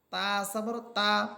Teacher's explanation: এখানে তা জবর তা বলে টানা যাবে না বরং টান ছাড়া পড়তে হবে যেমন তা জবর তা আমি এখানে টানতেছি না টান ছাড়া পড়তেছি